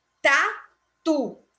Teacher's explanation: O tu é a sílaba forte.